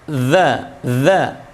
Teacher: Nah, sekarang khusus rikhwah itu huruf dzal itu harus ditahan nafasnya, tapi suaranya yang dialirkan